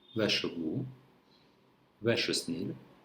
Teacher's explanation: We have sh sound because one word ends with R and another word starts with S.